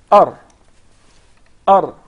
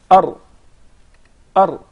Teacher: The letter Ra is articulated from the tip of the tongue.